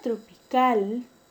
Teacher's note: la mayor fuerza de voz está en la última sílaba. Entonces, es una palabra aguda.